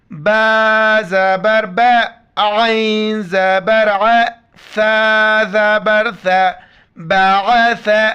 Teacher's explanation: ثم بعثہ، بعثہ، جب وقف کریں گے صرف آخر میں ہا کا ساؤنڈ آئے گا اور ثا کے وقت زبان باہر نکالنا ہے، عین کو گلے سے کرنا ہے۔ با زبر با، عین زبر ع، ثا زبر ثا، بعث، ہا الٹا پیش ہو، بعثہ، چھوٹی طوا ہے رموز اوقاف میں سے وقف لازم، تو یہاں پر پڑھیں گے بعث، آخر میں صرف آ کا ساؤنڈ آئے گا۔